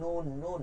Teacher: এইখানে তালু যেটা আছে, জিহ্বার আগা সোজা বরাবর তালুতে লাগবে, এটা কিন্তু বাম দিক ডান দিক না